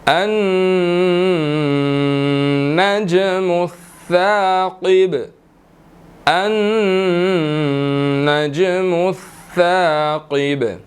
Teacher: نون مشدد ہے، تو یہاں پر ہم نے غنہ کرنا ہے